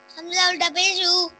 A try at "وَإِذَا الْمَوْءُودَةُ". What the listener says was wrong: لمبا نہیں کرنا. وَإِذَا الْمَوْءُودَةُ زال کو اوپر والے سامنے والے دانتوں کے کناروں سے ادا کریں.